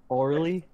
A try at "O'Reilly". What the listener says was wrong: Yeah, it just sounds like you're saying orally. Yeah, it's O'Reilly. O'Reilly, not like not like an oral exam, like O'Reilly as in O'Reilly. It's like ire all over again.